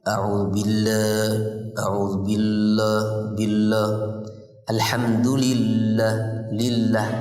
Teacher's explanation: Tapi tetap ketika tarqiq pun kadang-kadang sebagian khususnya kaum wanita sering menebalkan lamnya